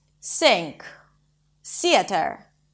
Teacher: Because it's difficult and weird to stick the tongue out a lot of Russian speakers keep it inside and then it sounds something like an 's'